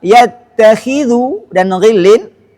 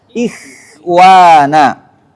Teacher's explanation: huruf kha dan ghain yang berharakat kasrah seperti kata yattakhidhu dan ghillin memiliki tingkatan ketebalan yang rendah. Begitu juga apabila keduanya sukun dan didahului huruf yang berharakat kasrah seperti kata ikhwana.